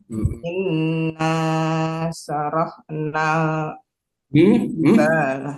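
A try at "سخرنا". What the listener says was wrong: bukan saroh. Terbalik. Kho dulu baru ro. Sakhor bukan saroh.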